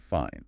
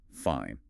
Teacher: Say with a rising tone, fine. Sounds like you're okay. Maybe asking back, but say with a falling tone, fine. It can mean you're definitely not fine, maybe even annoyed.